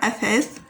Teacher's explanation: you press your tongue out of your mouth while you pronounce the second letter